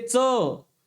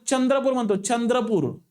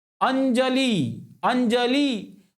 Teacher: च जंचा उच्चार आपल्याला या दंत तालव्यामध्ये दिसतो